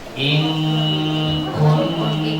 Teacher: In kuntum itu harus didengungkan, supaya didengungkan sekedar satu alif